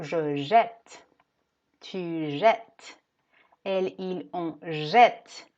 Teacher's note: Cuando tenemos doble consonante, la E se va a abrir en el sonido